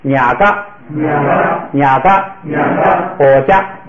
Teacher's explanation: 如果放在第二音节的话，变高平声的同时变成不送气 ，等于变成了第一行的发音。咱们看啊，nha嘎，我家。然后这里头有一个特殊情况，就是爬呢，如果跟写不就在一块儿，就读成不，就按照那规则。如果是单独的，没有任何元音